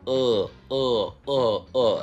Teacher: фейковый у это звук у которого пытаетесь сделать без округления губ